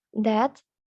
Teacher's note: the T sound at the end of the word that might be pronounced with an aspirated t, and it pronounced as that, and then with a glottal stop, and it's pronounced as that, or an unreleased sound that is pronounced as that.